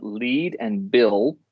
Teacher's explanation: air can escape along the sides of the tongue · L is as in lead and Bill is a voiced lateral or lateral approximate the tongue tip touches the alveolar Ridge but the size of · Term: lateral approximant liquid